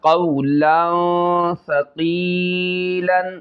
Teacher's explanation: واؤلین ہو رہا ہے، اس کو نہیں کھینچیں گے